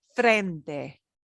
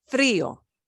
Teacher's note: A single R does not get a strong trill. It gets like a single flap of the tongue trill